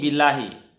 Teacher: Kalau billahi berarti ini dibaca tipis. Kenapa dibaca tipis? Huruf sebelum Allahu itu berbaris kasrah. Nah, maka Allahunya dibaca tipis. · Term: tarkik